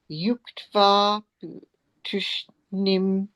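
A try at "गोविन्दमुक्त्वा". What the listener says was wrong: That came out as Yuktva, is Govindam Uktva rather than Yuktva. Uktva.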